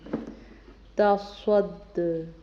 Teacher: دال چونکہ حروف قلقلہ میں سے تو دال پہ ہم قلقلہ کریں گے۔ تصد۔